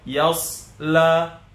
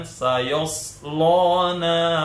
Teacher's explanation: yang tebal hanya huruf sad. Jadi huruf ya sebelumnya dan huruf lam setelahnya itu tidak tebal.